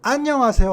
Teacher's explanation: 외국 사람들은 대부분 자기네 나라에는 첫음 절의 강세가 있으니까 발음할 때 안녕하세요 하고 앞으로 올리게 돼 있습니다 그다음에 하세오 어 이렇게 얘네 발음은 강약 강약 이렇게 발음 나거든요